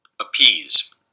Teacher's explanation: we get this little tiny schwa vowel, and then just as we saw earlier, a nice burst here followed by aspiration.